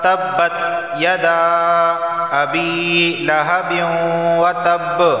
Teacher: وتب، یہاں دیکھیں یدا الف مدہ آ گیا یہاں پر، یعنی کہ یدا کے آخر میں الف مدہ اور ابی کے شروع میں حمزہ آ گیا۔ یہاں مد منفصل واقع ہونے کی وجہ سے مرضی ہے کہ اسے 2 الف کے برابر کھینچ کے پڑھا جائے، 3 کے برابر کھینچ کے پڑھا جائے یا 4 کے برابر کھینچ کے پڑھا جائے۔